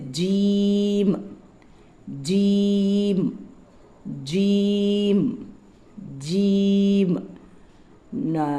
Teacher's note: நாக்கினுடைய நடு நாக்கிலிருந்து இது உச்சரிக்கப்படும்